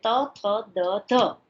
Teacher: ત અઘોષ અલ્પપ્રાણ છે, થ અઘોષ મહાપ્રાણ છે, દ ઘોષ અલ્પપ્રાણ છે